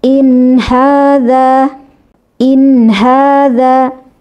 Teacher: Ketika kita membunyikan suara nun sukun ketika izhar, nun sukun tetap harus berada di makhraj nun, yakni ujung lidah menempel di langit-langit atas.